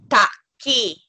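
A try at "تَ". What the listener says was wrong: No, this is short for ta, and this is it ya madda or is it simple ya?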